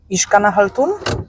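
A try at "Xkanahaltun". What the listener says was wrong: La X se pronuncia como SH, como sh, de Shkanahaltun.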